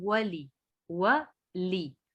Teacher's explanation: वाव को भी नहीं खींचना, लाम को भी नहीं खींचना